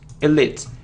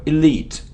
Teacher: And the stress is on the second syllable.